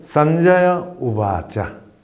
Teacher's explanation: 끊어서 읽으시면 산자야하 이렇게 윗사르가를 발음하시고 우바자 하시면 됩니다. 이어 읽으시면 윗사르가를 없애고 산자야 우바자 이렇게 발음하셔야 됩니다.